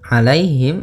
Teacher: alaihim ada ya sukun di dalam fathah bacaan lin